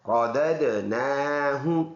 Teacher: ثم، ثا نرم حرف ہے، میم مشدد ہے، اس میں ہر حال میں غنہ ہوگا، ناک میں آواز لے کے جائیں گے، ثم رددناہ، دال میں قلقلہ کریں گے، رددنا، نون پر کڑی زبر، ایک الف کے اندازے سے اس کو لمبا ادا کرنا ہے